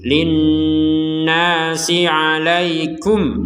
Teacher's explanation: Nun bertasydid ini kita harus mendengung.